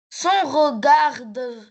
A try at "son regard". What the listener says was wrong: son regard, son regard. ne prononce pas le D.